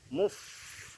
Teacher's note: ada suara hamesnya, nafas mengalir